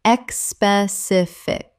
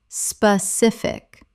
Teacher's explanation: 3 syllables. There is no E at the start. It begins with SP, not ESP.